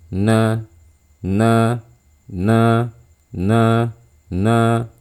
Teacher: ya Jangan dibuka terlalu lebar biasa aja sebelum kita membuka mulut alirkan dulu sedikit suara Nun saat kita sudah meletakkan ujung lidah kita di langit-langit mulut atas